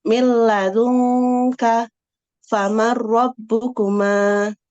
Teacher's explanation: Idgham bila gunah ialah nun sukun atau tanwin bertemu lam ro dileburkan dan tidak boleh dibaca dengung